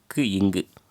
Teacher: நாவினது முதற்பகுதி அன்னத்தை தொடுவதனால் தோன்றும் எழுத்துக்கள் எதுன்னா க்கு இங்கு அதாவது நாவினது முதற்பகுதி அன்னத்தை தொடுவதனால் தோன்றும் எழுத்துக்கள் வந்து